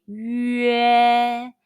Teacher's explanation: First, pucker your lips to pronounce yu, then immediately followed by e as in the English word yes. Say 约. Your lips are from round to spread. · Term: final 约, the final 约